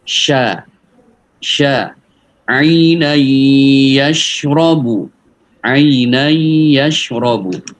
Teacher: sifatnya sya itu at-tafashi, jadi anginnya itu dorongan suaranya banyak, anginnya itu banyak. Desisnya, at-tafashi, desisnya itu banyak.